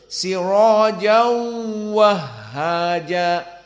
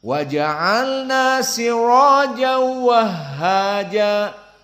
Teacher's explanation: Maka ada 2 harokat bagi jumhur karena bi gunnah. Adapun untuk qiraah hamzah tidak ada gunnah, hanya idgham.